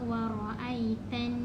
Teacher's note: Nun musyaddadah pun kena panjangkan 2 harakat dan lebih sedikit. So bila kita nampak wa ra'aitan, kan, tan, yang tan tu 2 harakat dan lebih sedikit.